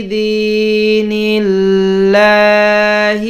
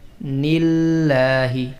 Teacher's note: اب یہ لفظ اللہ ہے اور اس سے پہلے نون کا لفظ ہے اور نون کے نیچے زیر ہے، تو لفظ اللہ کی آواز کو باریک پڑھ رہے ہیں